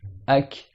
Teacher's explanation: Tu sens que le souffle, il s'arrête un peu plus devant. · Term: Le kaf